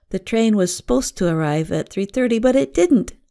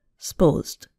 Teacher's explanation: a two-syllable word, supposed, becomes more like one syllable